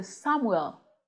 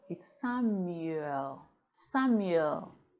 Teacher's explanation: There's a ye sound before the oo.